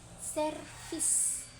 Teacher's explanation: bibir bawah menyentuh gigi atas dan pita suara bergetar